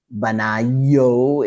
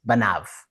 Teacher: So remember before when we were talking about suffixes, that O suffix means his, but when it's got a vowel sound right before it, instead of having a diphthong where you have two vowel sounds together, the vav loses its vowel sound and just becomes v